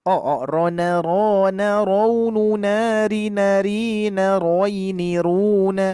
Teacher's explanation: Ini bukan ra tapi ro, ingat ya. Ro istilah. Bunyinya o, hati-hati ya. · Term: huruf ro